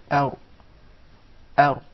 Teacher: That's an English Ra now, where the tip of the tongue is far away from the gum.